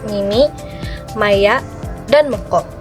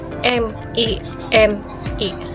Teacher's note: bunyi fonem m termasuk bunyi nasal bilabial di mana diucapkan dengan kedua bibir yang menutup dan udara keluar melalui hidung